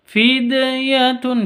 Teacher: Qalqalah sugro ada di tengah. Kalau ada dal sukunnya ada di tengah berarti qalqalah sugro. Harus dipantulkan ke hurufnya. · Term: Qolqolah Sugro